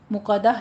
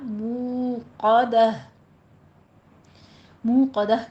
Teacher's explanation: واو مدہ کی آواز دونوں ہونٹ گول کرتے ہوئے اس کو 2 حرکتوں برابر لمبا کھینچنا ہے ، مقدہ نہیں کہنا، موقدہ، موقدہ کہتے ہیں بھڑکائی ہوئی، نارو،